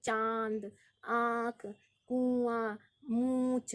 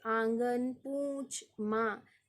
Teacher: इन स्वरों के उच्चारण में मुख के साथ साथ नासिका, यानी नासिका का भी सहारा लिया जाता है, या कहीं मुख के साथ साथ नाक से हवा बाहर निकल जाती। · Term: अनुनासिक